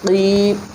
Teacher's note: وَإِذَا قِيلَ لَهُمْ آمِنُوا كَمَا آمَنَ النَّاسُ قَالُوا أَنُؤْمِنُ كَمَا، واو زبر وا، حمزہ زیر ای، وَإِذَا الف زبر زا، وَإِذَا قاف کو اوپر پڑھیں گے، یا ساکن سے پہلے زیر ہے، حروف مدہ ہے، 1 الف کی مقدار کھینچ کر پڑھیں گے